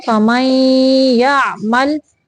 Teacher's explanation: یہاں پہ نون کی آواز یعنی ناک میں لے کے جانی ہے، غنہ کرنا ہے